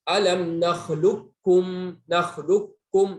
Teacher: langsung ke kafnya. Kafnya tidak tersentuh sama sekali. Itu namanya idgham kamil.